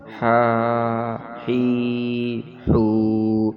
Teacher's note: ہا کی آواز آئے گی حلق اور گلے سے۔ باریک آواز ہے، حلق والی ہا